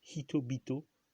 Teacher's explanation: Le deuxième élément commence par une consonne sonore.